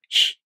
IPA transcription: ç